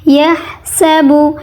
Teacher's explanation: گلے سے ہلکی سی گرم ہوا نکلے گی، اس پہ رگڑ نہیں ہوگی